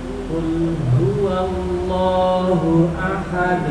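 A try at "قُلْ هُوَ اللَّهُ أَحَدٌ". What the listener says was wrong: Iya, nanti belakangnya dinaikkan ya Pak supaya lebih tebal lagi.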